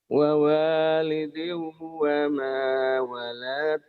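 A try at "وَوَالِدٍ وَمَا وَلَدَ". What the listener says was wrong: jangan walad. Emang ada yang manjangin saya tanya ayo. Jangan dipanjangin ya.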